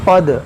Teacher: یہ قد دال میں قلقلہ کریں گے